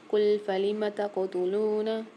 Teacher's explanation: تا کے ساتھ قاف آ رہا ہے، یہاں پر قاف میں قلقلہ کر کے پڑھیں گے۔ لام کے ساتھ واو ساکن ہے، لام کو ایک الف مقدار کھینچ کے پڑھیں گے۔